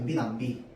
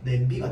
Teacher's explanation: 뒤에 있는 이 모음이 여기에 와서 영향을 끼쳐가지고 남을 냄으로 바뀌었다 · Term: 이 모음 역행동화